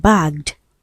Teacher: For words that end with the g sound as in bag. Right. The ed d becomes d.